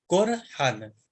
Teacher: تفخیم یعنی اس حرف را کو موٹا بنا کے ادا کیا جائے گا۔ چوتھا پوائنٹ ہے کہ ساکن ہو، کیا حرف رے آپ کا ساکن ہو لیکن اس سے پہلے جو حرف آ رہا ہے، تیسرے پوائنٹ میں کیا تھا کہ زبر ہو، لیکن چوتھے پوائنٹ میں یہ کہ اس سے پہلے والا حرف پیش ہو، جیسے قرآن۔